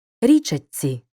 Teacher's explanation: шиплячий ч перед свістячим ц уподібнюється до нього тож вимовляємо як довгий ць